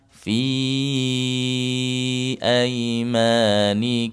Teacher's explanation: Afwan, fi itu 4 harakat. Setelah huruf mad depannya ada hamzah.